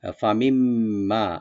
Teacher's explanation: ফামিম্মা, ফা ওপেন রাখবেন, মিন নুন সাকিনের পর যে মিম আসছে, নুন সাকিনটা এখানে মিমের সাথে মিলাই পড়বেন, একদম গুন্না হবে এটা। ফামিম্মা, যে নুনটা মিমের সাথে মিলে যাবে, এখানে নুনটা উচ্চারণ হবে না।